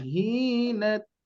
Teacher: Hina jadi bukan hinna, bukan hinna tapi hina biasa saja. Belum ada hukum yang lainnya ya.